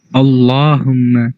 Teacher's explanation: اس میں لام موٹا ہو رہا ہے